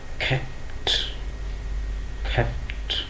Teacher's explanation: C is aspirated and P is unaspirated